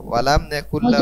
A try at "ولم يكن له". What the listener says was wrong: হুজুর এখানে হুজুর এখানে হুতে টান হবে না একালিক হাউটা পেশ হু